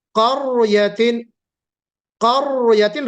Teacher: را ساکن سے پہلے قاف، قاف کے اوپر کیا ہے، زبر ہے. تو ہم کیسے پڑھیں گے؟ قریتن، قریتن. را کو موٹا کر کے پڑھیں گے